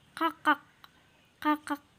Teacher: Jadi di akhir itu seperti tidak ada K di situ terdengar seperti samar-samar, tetapi tetap ada seperti bunyi pantul. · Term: K yang hamzah